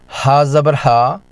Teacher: یہ حمزہ کی طرح وہیں سے نکلتا ہے، لیکن یہ اس سے زیادہ نرم اور سانس کی روانی کے ساتھ ادا ہوتا ہے۔ کی ادائیگی کے ساتھ اندر کی رکی ہوئی ہوا بھی باہر نکلتی ہے۔